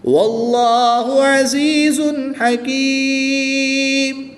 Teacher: وقف کی حالت میں یہاں پر مد عارض ہوگی، 2 سے 3 الف تک کھینچ کر پڑھیں گے۔